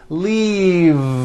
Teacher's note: The word is leave with a voiced V. Keep the voicing going throughout the whole word and voice the V. Leave, like that.